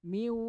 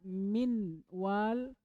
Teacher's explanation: Kalau idgham dia dileburkan, nunnya sama sekali hilang.